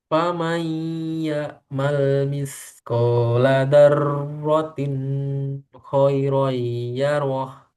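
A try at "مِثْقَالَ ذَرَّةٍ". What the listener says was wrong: Misqala. Zalnya jangan dah. Dah. Itu dal yang benar. Za. jangan dilanjut. Za. Za aja. Za. Bukan da. Za. Nah, digigit ujung lidahnya. Za. Nah, kemudian zarwatin kho itu nggak perlu ditahan. Zarwatin khairoyarah yang ditahan ro roy roy.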